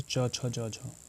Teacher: तालव्य, तालु से जो टकरा रहे हैं